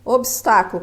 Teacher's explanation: o encontro consonantal cada uma das consoantes preserva o seu fonema